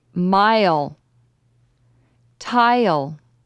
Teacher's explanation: add a y sound before the L in i l words first say the long I then say y as your voice drops